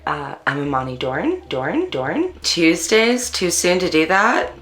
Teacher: african americans in california participate in local features such as ooh fronting and up talk